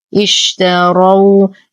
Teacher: نلاحظ أن الراء مفتوحة فهي مفخمة